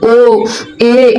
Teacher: संवृत की अपेक्षा थोड़ा क्या रहता है, मुख द्वार आपका खुला रहेगा। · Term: अर्ध संवृत